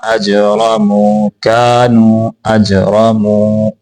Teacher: جیم کے اوپر قلقلہ کریں گے، را کو موٹا کر کے پڑھیں گے، میم کو لمبا کر کے پڑھیں گے کیونکہ یہ واو مدہ ہے.